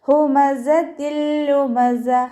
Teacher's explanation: ഹൻ്റെ sound clear ആക്കിയിട്ട് തന്നെ പറയുക, ഹംസയായി പോവാതെ ശ്രദ്ധിക്കുക